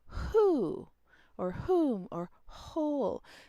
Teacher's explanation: So we don't go from the h position to a slightly more constricted woo, and then open up just the teeny tiniest bit to get to the oo or the o sound or whatever. So we go right from the h to the rounded vowel.